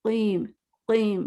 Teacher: जबान को तालु के बजाय ना कव्वे पे टच करें क़ीम क़ीम फोकस करें कव्वे पे टच हो रही है मुस्तकीम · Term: काफ